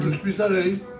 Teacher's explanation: quand il y a une liaison, je suis allé, on prononce le S